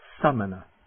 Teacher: It's a very short A, almost like the U in but.